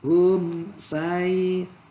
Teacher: hum sai izhar syafawi, hum sai tidak didengungkan